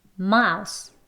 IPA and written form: maʊs (mouse)